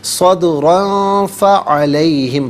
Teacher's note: را پر دو زبر کی تنوین، را کو پر کر کے پڑھا جائے گا اور تنوین کے بعد فا آ رہا ہے حرف اخفا تو یہاں پر اخفا بھی کیا جائے گا